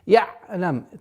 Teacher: Айн при сукуне нужно такое немножко скользящее произношение.